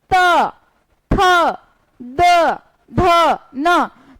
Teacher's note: हमारे जो दांत हैं वो टंग के बीच में आ रहे हैं। इसको हम बिना उसके बिना दंत के हम इसको इसका उच्चारण नहीं कर सकते।